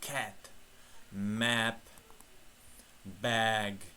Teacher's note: mana bu tovush bizda a bilan e ni qorishmasi degani a ham emas e ham emas